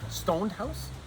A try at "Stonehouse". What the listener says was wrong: Yes, no, Stonehouse. No D. Well, unlike a fraternity, there's no D.